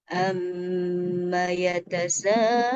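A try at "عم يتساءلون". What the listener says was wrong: Terlalu tinggi. Alun, alun, amma yatasaalun. Agak turun sedikit.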